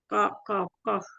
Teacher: pangkal lidah bagian belakang menyentuh bagian yang lunak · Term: huruf qaf